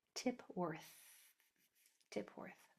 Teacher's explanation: the last sound is my tongue going between my teeth and blowing